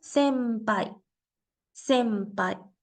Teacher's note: Como la N y la P son un poco difíciles de pronunciar por separado dentro de la misma palabra, los japoneses sustituyen la N por la M.